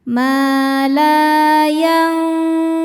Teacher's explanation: Jadi pertengahan ya. Dibacanya samar disertai dengung, samar dan dengungannya seimbang. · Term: awsat